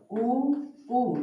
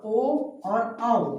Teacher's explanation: देखो, ओठ व्रत की भांति गोल होना चाहिए, बोलते चलना है आप लोगों को, आप यहां से समझ में आ जाएगा। ऊ देखो हमारा ओठ व्रत की भांति गोल हो रहा है, और ओ और आओ इसमें भी हमारा जो मुख है, जो ओठ है, क्या हो जाएगा, इसके भांति कैसा हो जाएगा, गोल हो जाएगा। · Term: व्रतमुखी